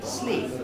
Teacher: The nucleus was sleep, and it's a high fall. Sleep. But before that, there's a head with 2 accents in it, each of which is rising.